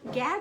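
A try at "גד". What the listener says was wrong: Hebrew, you don't say Gad. You pronounce it God. Like you do in Spanish. The A is not an A, it's an A.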